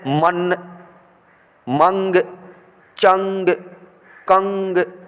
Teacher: सब में नाक में आवाज़ आ रही है ना, नाक से आवाज़ निकल रही है